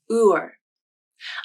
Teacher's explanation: the OOR vowel is made up of two sounds: the UH like in book vowel and the R sound. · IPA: /ʊɹ/